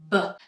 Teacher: press the lips together just a little bit more firmly than you would in Spanish, really blocking the air and then letting it out in a kind of big explosion · Really blocking the air and then letting it out in a kind of big explosion. B. The difference is that here my voice is on.